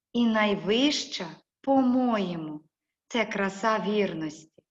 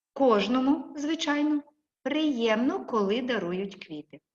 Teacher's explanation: вимовляються з особливою інтонацією швидшим і нижчим тоном ніж слова того речення в яке вони введені і виділяються паузами